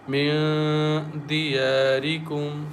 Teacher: So we merge first meme into the next meme and recite with nasal sound with gunna as أنفسكم كم من دياركم. There is a noon sakin is followed by dal, and dal is one of the hide letters. So we recite with light nasal sound